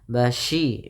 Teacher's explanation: Pada lafal syi ini usahakan sempurna shinnya ya, jangan sampai dibaca dengan basiraw. Tapi dia basyi shin ya.